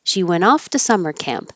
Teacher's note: I'm completely skipping the T. The N and the T are made in the same place with the tongue